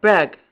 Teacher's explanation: Ha, front, open, lax, and unrounded